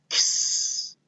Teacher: This sound is the K sound and the S sound smashed together. So it's kind of like two sounds in one.